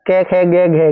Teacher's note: कंठ से उत्पन्न होने वाले वर्ण